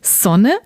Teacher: So I never use the Z sound when I speak German, usually.